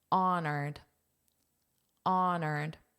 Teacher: you may have noticed that this H is not pronounced